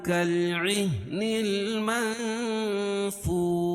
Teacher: کالعہن اخفاء حقیقی، کیونکہ نون ساکن کے بعد حروف اخفاء کے 15 حرفوں میں سے فا ہے، اور واو ساکن سے پہلے پیش ہو تو واو مدہ، اس کو ایک الف کے برابر کھینچ کے پڑھیں گے. اور وقف کی صورت میں شین کے نیچے جو زیر ہے اس کو جزم سے بدل دیں گے تو یہاں مد عارض وقفی ہوگا.